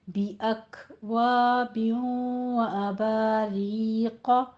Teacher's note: अक में आपने काफ के ऊपर हम्स करना है